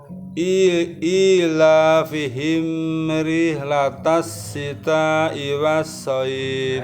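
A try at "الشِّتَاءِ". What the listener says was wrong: Baik, sinnya. Rihlatashi. Rihlatashi. Shi. Shi. Rihlatashi.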